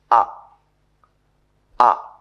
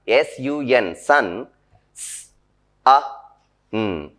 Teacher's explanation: The center of the tongue is raised. It is raised just above the fully open position.